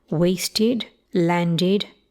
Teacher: Note the ED endings, especially my dear American viewers, okay? These use a kit vowel in all varieties of standard English, including modern RP.